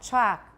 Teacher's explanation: Chalk, we don't pronounce the L. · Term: post-vocalic L